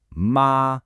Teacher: You'd be looking for that rising second tone